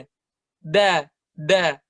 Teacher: huruf Dal da itu bacanya itu di belakang gigi seri persis